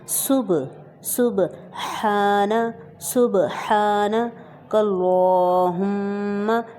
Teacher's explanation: یہاں پر سین کی سیٹی کی صحیح آواز آنی چاہیے، اس کے بعد با ہے، با ساکن ہے، تو اس کا مطلب ہے کہ اس کو ہم قلقلہ کر کے پڑھیں گے، اور قلقلہ کا مطلب ہوتا ہے کہ آواز کا پلٹ کر آنا۔